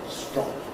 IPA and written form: strɒŋ (strong)